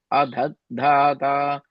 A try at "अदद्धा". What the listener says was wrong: Again, that last line, you added an extra dha at the end. Adhatta.